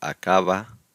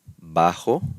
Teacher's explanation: if the B is within a word, such as acaba, it's a little softer